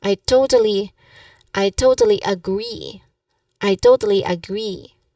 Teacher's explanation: Now, the pronunciation tip here is that you emphasize on the word agree, to give it a bit more, stress or emphasis. And there's also a longer E sound here at the end.